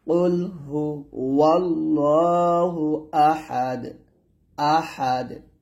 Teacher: যদি এখানে থামেন তাহলে দালটাকে কলকলা করতে হবে, তাহলে হবে কুল হুয়াল্লাহু আহাদ, আহাদ আহাদ, এরকম।